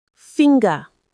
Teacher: in finger, you actually do say the G after the N sound. It's finger.